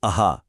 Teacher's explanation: विसर्ग, जो एक ह जैसी हल्की सी आवाज पैदा करता है